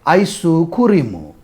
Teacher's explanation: is no more ice cream because it has too many clusters Japanese is a language that prefers the CV CV syllable structure and therefore ice cream becomes something like ISU Kuru